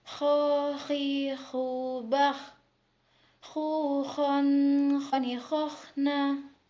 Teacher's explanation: huruf kho dikeluarkan dari tenggorokan yang lebih dekat dengan rongga mulut, seperti orang yang sedang mendengkur